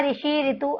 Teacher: उच्चारण स्वर के रूप में ना होकर ये री के रूप में होता है, मतलब उसमें लुप्त नहीं हुआ है।